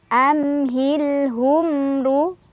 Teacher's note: Ro-nya dibaca secara tafkhim karena ro berbaris dhammah, jadi ditebalkan. Ruwai ada harf lin karena ada ya sukun, sebelumnya ada fathah di wawu.